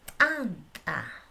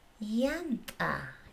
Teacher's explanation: el ta alveolar, oclusivo glotalizado